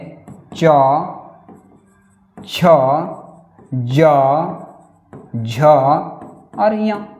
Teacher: च ज झ और ञ इसका उच्चारण स्थान तालु है